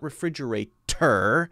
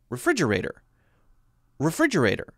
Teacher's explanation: don't hit the t so hard not refrigerator but refrigerator refrigerator so you hear that there's a light d sound